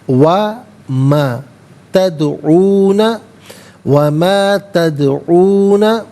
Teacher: تدعون میں دال ساکن ہے لیکن یہ حرف قلقلہ ہے تو آواز لوٹتی بھی محسوس ہونی چاہیے